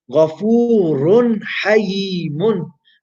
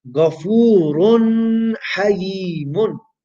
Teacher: We have a tanween that's appeared before the letter of the throat, which is ha. So again, we will make the tanween short, sharp, and clear. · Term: izhar